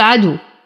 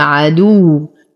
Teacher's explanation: لو وقفنا على الواو نعطيها بعض النبر لأنها مشددة فلا أقول عدو وإنما عدو.